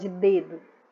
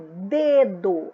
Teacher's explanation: o dedo a sílaba mais forte é de